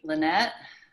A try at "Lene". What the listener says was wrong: Yeah, it's Lene. The T is silent.